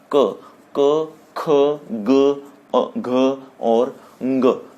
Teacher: इसको बोलते समय जीभा कहीं टच नहीं हो रही, इसीलिए आप समझ रहे होंगे कि यह कंठ से बोले गए वर्ण हैं